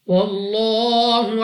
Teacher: لام اف اللہ سے پہلے حرف پر زبر ہے، تو اس لام اف اللہ کو پر یعنی موٹا پڑھیں گے منہ اور آواز کو کھول کر